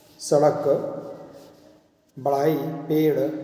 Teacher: यह द्विगुण व्यंजन है ड़। इसका उच्चारण मूर्धा से किया जाता है। शब्द लेखन में इसका प्रयोग शब्द के मध्य और अंत में किया जाता है।